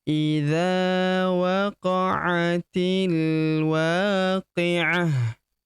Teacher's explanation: huruf dza kita panjangkan 2 harokat karena terdapat tanda alif di depannya yang ini. Idza waqa'atil, huruf ti langsung lompat masuk ke huruf lam yang berharokat sukun ini.